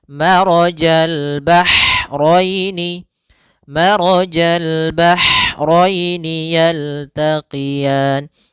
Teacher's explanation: Yaitu ha atau bisa kita sebut dengan ha pedas, yaitu adanya aliran nafas yang kita lafalkan dan dia lembut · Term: ha kecil